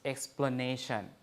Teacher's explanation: you see a becomes schwa right